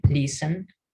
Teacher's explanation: Algunos pueden incluso colocar la E, listen, ¿sí? Como listen, pero es una E que apenas se escucha